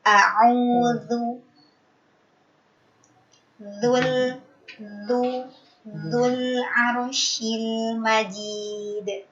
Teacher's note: Pada pengucapan huruf dzal yang berharkat dhamah disempurnakan pengucapan dhamahnya. Dzu dimonyongkan.